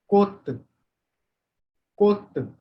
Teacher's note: So whenever Cha is written at the Batchim position, this will also be pronounced as what? Ta. Kot. Pronunciation will be kot.